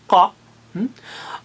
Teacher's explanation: قاف زبان کی جڑ کو یعنی آخر کے حصے کو تالو سے لگانے پر نکلتا ہے، قا، اور خا اور غین حلق کے اوپر سے، تو گویا یہ جوائنٹ کے پاس ہیں، جوائنٹ کے پاس ہیں، اور تینوں اونچے ہیں۔